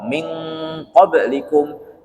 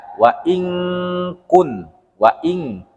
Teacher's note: ketika dia nun mati bertemu huruf ko dan ka, dia jadi eng